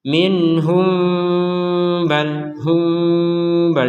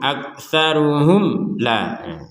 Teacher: Jadi kalau bertemu dengan ba, ya digabung dengan ba, ya mim sukunnya tidak dibaca dengan jelas.